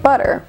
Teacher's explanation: that's a voiced alveolar tap